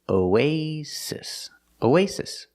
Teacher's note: The O is pronounced with a long O, like go and no. The A is pronounced like a long A, like say and pay. · The stress is on the second syllable